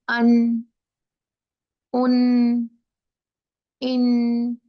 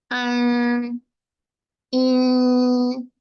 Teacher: जुबान को पीछे रखेंगे, नून के मखरज से पीछे लटका लेंगे मुंह में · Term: इख्फा